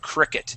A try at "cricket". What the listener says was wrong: Okay, yeah, so it's still rolling just a little bit, saying cricket. Cricket. So we're gonna say cricket.